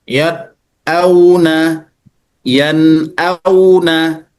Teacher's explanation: Maka yad auna yanuna nunnya itu khaisyum a-nya jelas. Jadi cara membacanya izhar dengan jelas karena dia bertemu dengan halqi tapi nunnya ada aliran gunah